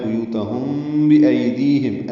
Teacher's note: ہم میں میم ساکن کے بعد با آنے کی وجہ سے اخفاء شفوی ہے ، بیوتہم بِأَیْدِیہم، ای آئلین ہے، دی آئے مدہ ہے، ہم